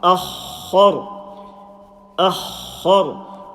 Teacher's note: Alif empty mouth. Kha and Ra full mouth.